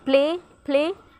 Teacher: So here in word play the P comes initially so it will be aspirated.